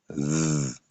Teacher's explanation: La langue entre les dents, ça vibre un peu.